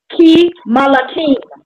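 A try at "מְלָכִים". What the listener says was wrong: You wouldn't say the ma. You would see that's a Shiva underneath that mem. How would you say that? Keem Lakim. Keem Lakim.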